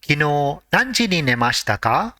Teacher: nemas which means to sleep and the past tense is nemashta since it is a question it has to end with ka with a rising intonation